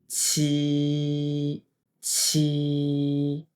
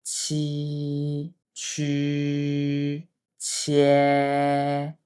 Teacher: 发出声音的瞬间，要用力把一股气吐出来